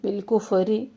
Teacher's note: فا میں ہمس جاری رہے